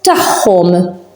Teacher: The ayn and akka near each other, they pronounce as h.